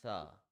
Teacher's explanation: In Tha, the tip of the tongue touches at the edge of the upper tooth gently.